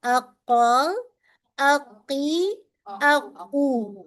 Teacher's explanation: when we touch the root of the tongue on the soft palate then we make cough